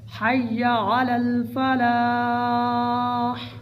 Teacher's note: وقف میں حا کی آواز آئے اور یا کو بھی ظاہر کر کے پڑھنا ہے